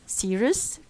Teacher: the first syllable is the stressed syllable, longer, louder, as you see, green line, and the pitch is higher than the unstressed syllable.